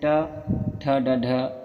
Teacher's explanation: जिन वर्णों के उच्चारण में जिह्वा का अग्रभाग कठोर तालु के अग्रभाग से टकराता है उसे हम मूर्धन्य वर्ण कहते हैं